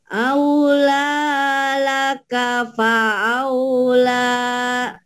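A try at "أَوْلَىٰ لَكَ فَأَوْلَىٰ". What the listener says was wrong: Oh, lagunya nggak ada tuh. Aula laka fa'aula. Ayo lagi, laguin, kurang lagunya.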